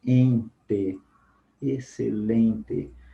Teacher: nós falamos um som só, o E nasalizado